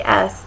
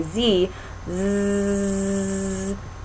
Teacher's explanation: if you say s there's no vibration you shouldn't feel your throat vibrating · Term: glottal state